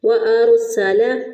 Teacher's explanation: سین میں سیڑھی کی آواز آنی چاہیے · اب را ساکن سے پہلے والے حرف پر زبر ہے اس لیے اس کو موٹا پڑھتے ہوئے ہم اس کو ادا کریں گے۔